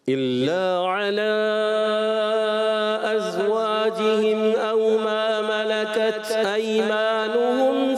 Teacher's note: علا کی مد کو تھوڑا سا اور کھینچنا ہے